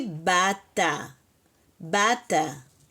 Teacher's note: Então vai ficar bata e você vai acentuar a primeira sílaba.